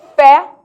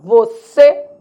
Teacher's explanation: Então, fé, timbre aberto, você, timbre fechado.